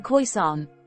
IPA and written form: ˈkɔɪsɑːn (Khoisan)